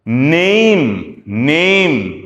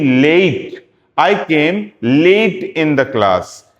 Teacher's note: ए ई, ए से घूमेगा और ई पे खत्म हो जाएगा